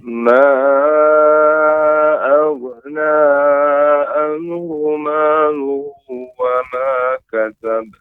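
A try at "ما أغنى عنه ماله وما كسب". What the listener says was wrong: Na-nya cukup 2 Pak panjangnya. Na'an. Na-nya cukup 2. Berbeda dengan ma. Na-nya cukup 2, nggak ada bendera dia kan?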